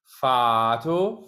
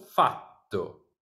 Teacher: this fato and fatto take the same amount of time, but it's whether it's the vowel taking more time or the consonant taking more time.